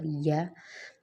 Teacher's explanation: یا مطلب زبان کا جو درمیانی حصہ ہے نا اسے اوپر کے تالوں سے لگائیں گے تو یا ادا ہوگا